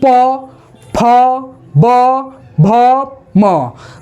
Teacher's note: वर्णों का उच्चारण कहां से होता है ओ से यानी कि बिना ओठ सटाए हुए उच्चारण हो ही नहीं सकता है